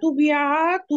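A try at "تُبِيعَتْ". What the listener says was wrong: তু টানতে হবে, তা ওয়াও পেশ তু।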